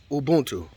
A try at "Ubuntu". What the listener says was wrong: Ubuntu. No, you keep adding that M before the first B. You keep saying umbu. It's ubu.